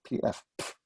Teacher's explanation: letters ts or tz it's an what we call an affricate it's where you start with a stop and then you push some air through and open it up